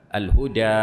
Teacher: التي هي الف بين الالف والياء تعتبر الفا لكنها بين الالف والياء لا هي الف خالصه ولا ياء خالصه انما هي الف قريبه من لفظ الياء لعلل اوجبت ذلك وبذلك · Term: الالف المماله